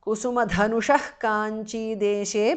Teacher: Visarga changes to jihva muliya.